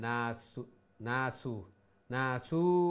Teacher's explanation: পেশ জুম্মাকে লং করলে ওয়াও হয়ে যায়, না সু না সু না সু বললে ওয়াও হয়ে যাবে।